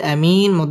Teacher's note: আরজি তিন আলিফ টান দিয়ে পড়তে হবে